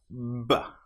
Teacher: Lips together build up pressure behind. With the B sound, we build up pressure with the vocal cords.